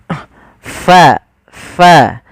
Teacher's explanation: ada angin yang dikeluarkan karena fa salah satu sifatnya sifat hames, yaitu mengalirnya nafas kita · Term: huruf fa